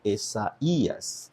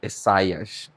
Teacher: Aqui nós temos esse encontro vocálico, ai, que poderia ser um ditongo, mas não é. Então, nós colocamos o trema aqui sobre a segunda vogal para indicar que, na verdade, não é um ditongo.